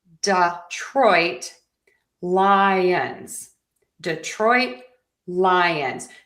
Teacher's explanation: our stress pattern here is like a pyramid. Low, high, high, low. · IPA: /dɪˈtrɔɪt ˈlaɪənz/